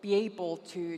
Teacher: she linked those vowels, which is something that non-native speakers generally find uncomfortable